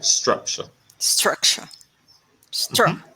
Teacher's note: the emphasis will be on the first syllable